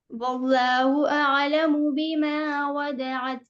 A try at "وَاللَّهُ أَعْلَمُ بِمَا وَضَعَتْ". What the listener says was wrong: لفظ اللہ صحیح نہیں، اس کا جو مخرج ہے نا مطلب جس طرح نکلنا چاہیے وہ آواز مجھے صحیح نہیں لگ رہی ہے. واللہ واللہ واللہ.